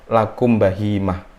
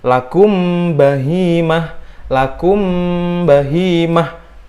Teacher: dia harus disamarkan dan dengung karena dia sudah masuk hukum ikhfa syafawi.